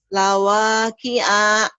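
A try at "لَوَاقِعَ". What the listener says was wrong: Pendek. Wanya doang yang panjang. Lawaki'a.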